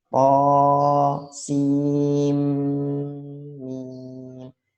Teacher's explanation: Sinnya itu bukan baca sin tapi sim. Karena apa? Karena nun mati ketemu mim. Jadi dimasukkan idgham.